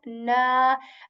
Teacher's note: I'm stretching the sound of this noon for two counts here. Why? Because again there is alif madda here.